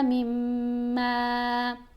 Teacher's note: میم کے اوپر گنہ کریں گے اور ایک الف جتنا اس کو لمبا بھی پڑھیں گے